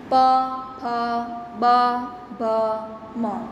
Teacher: ઓષ્ઠ્ય વ્યંજન એટલે કે બોલતી વખતે હોઠ એકબીજાને અડે છે.